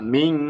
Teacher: মিম হবে না, মিং. নাকে নাকে যাবে মিং.